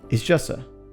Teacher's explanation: She says, it's just two, which sounds like it's just a. Basically, she drops the letter T there.